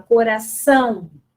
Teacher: Coração é terminado com O, mas o som do O é o som de U. Então, o O representa, nesse contexto, uma semivogal, certo?